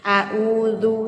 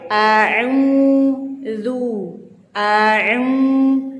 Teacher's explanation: Gimana huruf ain itu tempatnya di tengah tenggorokan ya. Jangan sampai kita melafazkan ain itu sama dengan hamzah atau alif.